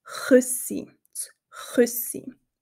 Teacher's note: Also dieses feine Ich, das hörst du nie im Schweizerdeutschen. Wir haben nur den Ch-Laut im Hals. · der Ch-Laut sehr rau und hinten im Hals gesprochen wird